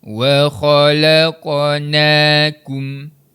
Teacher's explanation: Nun baris atas bunyinya na dipanjangkan dengan kadar dua harakat. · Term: mad asli